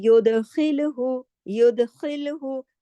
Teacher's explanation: दाल पे कलकला होगा, खा मोटा पढ़ा जाए, खिल, और खराश के साथ, क्योंकि हैवी फैमिली का है।